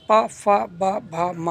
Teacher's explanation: ओष्ठ वर्ण। जिन वर्णों के उच्चारण में दोनों होंठ स्पर्श करते हैं उन्हें ओष्ठ वर्ण कहते हैं।